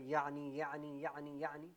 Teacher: عین کا مخرج کیا ہے آپ کا وسط حلق، یعنی جہاں سے ہا ادا ہوتا ہے یہاں سے عین ادا ہوتا ہے